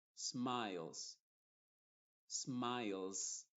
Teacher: es difícil hacer la transición entre la L y la z